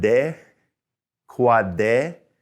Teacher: We hear that D sound, although it's a little bit more forward in our mouth.